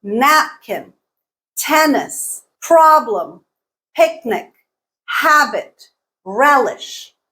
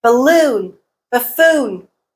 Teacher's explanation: all nouns the stress is on the first syllable